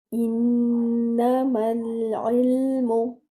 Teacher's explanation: for the noon mushaddad you will give akmal gunna. That means the most complete gunna. Stretch your gunna. Hold the sound in your nasal passage.